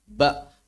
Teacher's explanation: kalau dibaca mereka bacanya biasanya ada letupan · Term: konsonan hambat sempurna